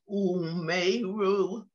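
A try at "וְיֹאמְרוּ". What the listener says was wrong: Yomeru. It's the yud.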